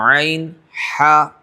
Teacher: بیچ میں جو حلق کا حصہ ہے وہاں سے عین ہا، زور دیں گے آپ بیچ حلق کے اوپر تو عین ہا، یہ 2 حرف نکلیں گے. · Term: درمیان حلق